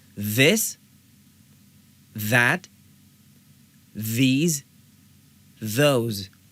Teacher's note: हम इसको वॉइस्ड साउंड इसलिए बोलते हैं क्योंकि जब हम इस आवाज़ को पैदा करते हैं, जब हम इस आवाज़ को निकालते हैं तो हमारे हल्क में वाइब्रेशन होती है, वॉइस पैदा होती है। तो इस वाइब्रेशन को महसूस करने के लिए अपनी 2 उंगलियां अपनी सांस की नाली पे रखिए और फिर इस आवाज़ को निकालिए। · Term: TH वॉइस्ड साउंड